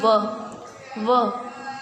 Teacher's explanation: व जो अब आप उच्चारित कर रहे हैं तो आपका ओठ और आपका दांत दोनों एक साथ हो जा रहे हैं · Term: दंतोष्ठ